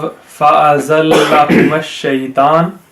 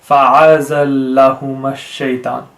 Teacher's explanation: Fa'a, that's incorrect because it is an alif, it's not an ayn